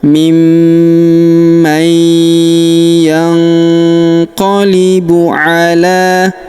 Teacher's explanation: Kemudian huruf nun sukun bertemu huruf qa, maka nun sukunnya melebur ke huruf qa, kita baca dengung dan samar. Dengungnya kita tahan 2-3 harokat.